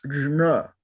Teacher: that is a palatal j and a palatal n. So it's jna.